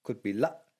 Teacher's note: could be la, with a glottal stop at the end